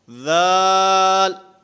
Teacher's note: ذال میں اس کی ادائیگی میں زبان دانتوں سے ٹکراتی ہے، دانتوں کے ساتھ زبان لگتی ہے